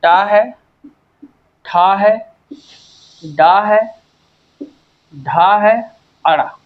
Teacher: इनका उच्चारण स्थान मूर्धा है।